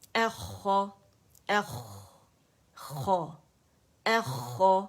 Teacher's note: آواز جاری رہے گی، آواز بالکل بند نہیں ہوگی